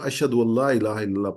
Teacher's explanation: ان کے آگے لا ہے، لا پہ تشدید ہے. جب پڑھیں گے تو نون جو ہے وہ ڈراپ ہو جائے گا، تو اشہد اللہ الہ الا اللہ پڑھیں گے.